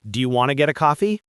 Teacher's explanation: Want to becomes wanna.